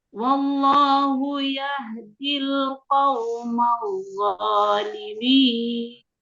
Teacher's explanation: Tasdid di dha, mestinya harus terdengar jelas tuh. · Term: syiddahnya